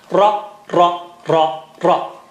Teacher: Don't say ra, ra, ra, ra, ra, ra, ra. That is English. Arabic is low frequency. Your tongue has to vibrate.